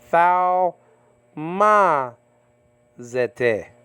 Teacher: the accent is right there on the second syllable ma